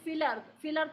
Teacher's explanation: اس میں ہم یائے مدہ نہیں بولتے، ہم فی نہیں بولتے، فی الارض نہیں پڑھتے، فی الارض پڑھتے ہیں.